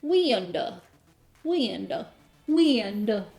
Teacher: In Southern English, a single syllable word like wind might come out as 2 or even 3 syllables.